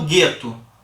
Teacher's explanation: Quando eu falo gueto, você consegue identificar tanto o som do G quanto o som do U? Não, do U nem aparece. Então, o G com U tem apenas um som só.